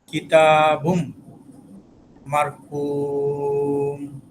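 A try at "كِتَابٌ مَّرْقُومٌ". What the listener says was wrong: কিতাবুম গুণা হবে না? বুম বলে আওয়াজ যদি ছেড়ে দেই তাহলে তো গুণাটা পুরো পরিপূর্ণ হলো না। কিতাবুম এভাবে ধরে রাখতে হবে।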